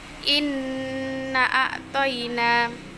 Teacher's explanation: cara membaca memucat dadah yaitu dengan menutup kedua bibir bersamaan dengan didengungkan secara nyata ke Pangkal hidung selama 2-3 harakat